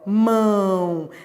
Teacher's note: Então eu vou da vogal, que é a mais forte, para a semivogal, que é a mais fraca. Então eu estou decrescendo. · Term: decrescente e nasal, ditongo decrescente e nasal